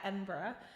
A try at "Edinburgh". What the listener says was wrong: Edinburgh. Yeah, it's not borough. I mean, I know some people might say borough. I just say Edinburgh.